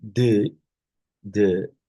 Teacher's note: a sound produced with, the tongue against the teeth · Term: dental